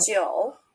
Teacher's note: A little bit like the English, like a Joe, but we need to make it like low tone.